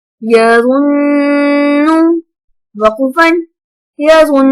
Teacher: اب نون پہ یہاں پہ غنہ ہوگا، مطلب اخفا ہوگا، کیونکہ ہم نے پہلے پڑھا تھا کہ نون اور میم مشدد ہمیشہ غنہ ہوں گے.